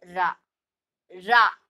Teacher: நல்லா அழுத்தி அந்த உள்ள நாக்க மடக்கி சொல்றது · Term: வல்லின ரா